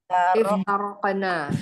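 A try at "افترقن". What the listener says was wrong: Iftarokna. Pendek ya nanya.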